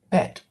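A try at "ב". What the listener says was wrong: That's actually vet because we are it doesn't have a dagesh, so it's going to be a V sound.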